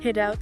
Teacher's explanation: Pronunciation wise, it often flows together. The D sound at the end of head connects to the vowel in out. Sometimes sounding almost like head out or even head out.